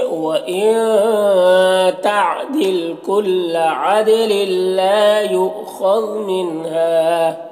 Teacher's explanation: لل میں ادغام تام ہو رہا ہے، تنوین کو لام سے ملا کر بغیر غنہ کے پڑھیں گے